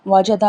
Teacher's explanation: جیم زبان کے درمیان اور تالو کے درمیان سے ادا ہوتی ہے